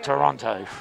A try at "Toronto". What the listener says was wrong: You do have trouble with Toronto. There's no T pronounced in Toronto. Toronto.